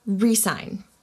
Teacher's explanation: you emphasize the first syllable